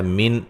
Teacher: نون ساکن کا یہاں اظہار ہے، ٹھیک ہے، غنہ نہیں کریں گے